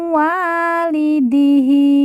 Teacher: nun mati dileburkan langsung masuk huruf wau kemudian ditekan ditahan dua harakat dan didengungkan